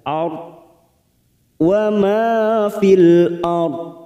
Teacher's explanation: Dan di sini kita membaca waqaf, maka ra sukun ini kita baca tafkim, kita baca tebal.